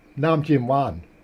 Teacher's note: High tone falling tone Rising tone